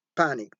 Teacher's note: do you think we have aspiration in that word panic panic is there a puff of air at the beginning yes or no let's see yes we have aspiration there